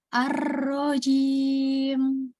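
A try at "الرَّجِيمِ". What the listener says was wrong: Tebalkan ro-nya. Angkat pangkal lidahnya. Ar-rajim. Ro. Ro. Ar-rajim. Ya, coba baca setiap hurufnya pelan-pelan saja, jangan buru-buru.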